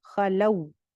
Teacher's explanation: واولین کو بھی جلدی سے پڑھتے ہیں لو لمبا نہیں کرتے